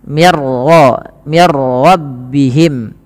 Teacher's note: Ra tapi dibaca dengan bacaan am bila gunah yang di mana suara nunnya langsung dimasukkan kepada huruf ro dan ro dibaca dengan tebal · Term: idgham bila gunah, idgham bila gunnah